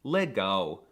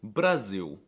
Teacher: the L is also quirky because it's often pronounced as a W